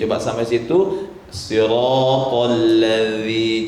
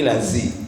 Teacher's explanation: Jadi yang dikehendaki dengan zal ini ujung lidah ke ujung gigi di atasnya.